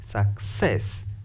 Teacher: The word success, stress the second syllable because it is longer.